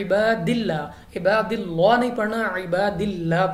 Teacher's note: अब यहाँ पे लाम ऑफ अल्लाह से पहले हर्फ के नीचे ज़ेर है तो हमने लाम ऑफ अल्लाह को बारीक पढ़ना है, ना कि पुर पढ़ना है · लाम को यानी आवाज़ को हमने नीचे गिरा देना है, और यहाँ पे स्वाद मुस्ताली में से अपुर पढ़ना है, और हीन को हमने थोड़ा लंबा करना है क्योंकि ये या साकिन से पहले ज़ेर या मद्दा, और वक्फ में ये मद्दे आयज़ बन जाएगी।